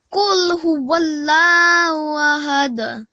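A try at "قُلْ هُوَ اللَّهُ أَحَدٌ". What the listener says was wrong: Okay, and I want you to make this a little bit more pronounced. قُلْ هُوَ اللَّهُ. I don't really hear this who.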